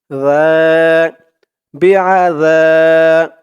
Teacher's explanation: জালের উচ্চারণটা একদম নরম পাতলা করতে হবে জিহ্বার মাথা উপরের দাঁতের মাথার সাথে লাগবে